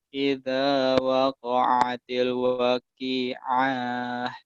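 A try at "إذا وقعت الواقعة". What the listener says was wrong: Wa'nya panjang. Idza waqa'atil waqi'ah.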